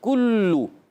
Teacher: اور یاد رکھیے کاف کی ادائیگی ہمیشہ زبان کی جڑ تالو کے سخت حصے سے ہوتی ہے، اور لام کا مخرج جو یہ بھی بتا دیتے ہیں، زبان کا کنارہ ضاحک سے ثنائے تک کے مسوڑے، یہ لام کا مخرج آپ نے یاد رکھنا ہے، ٹھیک ہے۔ اچھا، اب یہاں کاف جو ادا کریں گے، باریک ادا کریں گے، اور ہونٹ گول ہو جائیں گے دونوں میں